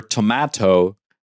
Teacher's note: Yeah, that will be tomato. In English, D and T are not dental. They are avail.